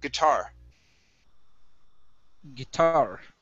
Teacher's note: the stress is at the end of the word guitar